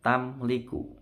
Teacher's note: izhar syafawi tidak boleh dengung